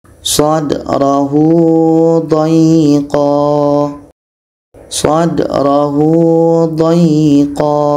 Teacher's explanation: Ketika ha dhamir yang ada panjang waw kecil bertemu selain hamzah, itu mat silah qasirah, dibaca 2 harakat panjangnya.